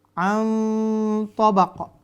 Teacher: Samarnya dengan tidak masuk ke makhraj huruf nun. Setelah itu, dengungkan samarnya an. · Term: ikhfa